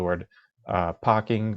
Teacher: the letter r, the sound r, is often not pronounced